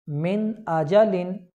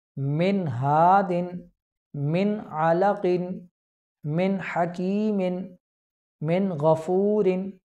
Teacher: नून साकिन और तनवीन में गुन्ना नहीं करेंगे बल्कि नून ज़ाहिर करके पढ़ेंगे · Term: इजहार